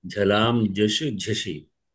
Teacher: ఝలాం ఝ మహాప్రాణం, ఝలాం ఝషి మధ్యలో మాత్రమే మహా అల్ప ప్రాణం. ఝలాం ఝషి అనే రెండు మహాప్రాణాలు, మధ్యలో ఉన్న జష్ మాత్రం అల్ప ప్రాణం